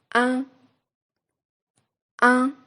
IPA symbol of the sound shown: ɛ̃